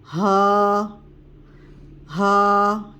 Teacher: پھر اس کے بعد ہا کا مخرج، یہ حلق کا آخری حصہ ہے، یہاں سے ادا ہوگا ہا. ہا کی ادائیگی سینے کی جانب ہوگی، سینے کی جانب سے ہا کی ادائیگی ہوگی اور آواز میں تھوڑا سا بھاری پن آئے گا